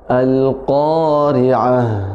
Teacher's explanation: Al-Qari'ah, ri tipis, ri ya. Kemudian tak marbutah disukunkan, maka hukumnya jadi hukum ha besar, ya. Jadi nafasnya dialirkan, dialirkan, dilepas.